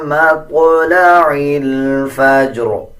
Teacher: جب وقف کریں گے تب بھی را کو پر پڑھیں گے اور زیر کو سائلنٹ کر دیں گے